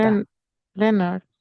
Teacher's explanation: La E y la O no suenan EO en inglés, suenan E.